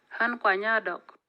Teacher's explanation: the vowel sounds longer before the noun with FSC than before the ordinary noun, but there is no audible tonal effect